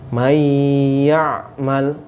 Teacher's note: Maka nunnya itu tidak dibaca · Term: idgham